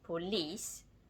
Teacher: In Group 3, we can even have nouns with more than one syllable, where the stress falls on the final syllable of the noun. · Lis is pronounced longer and louder